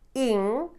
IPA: e͂